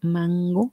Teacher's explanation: Si ustedes pronuncian mango, así ahí pronuncienla en su casa, mango, van a sentir como la N se va hacia atrás, como que sigue a la G, mango. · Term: N velar